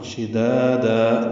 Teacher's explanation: دا الف مدہ اور پھر دا الف مدہ مد عوض وقفاً. شدادا، دو دو حرکات لمبے کریں گے.